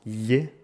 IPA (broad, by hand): ʎ